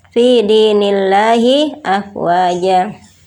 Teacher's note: Sedangkan pada ayat yang kedua fi dinillahi afwaja terdapat lafzul jalalah yang sebelumnya berharokat kasroh, maka harus dibaca dengan tarqiq atau tipis